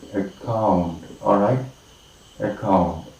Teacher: primary stress is marked on the second syllable, account.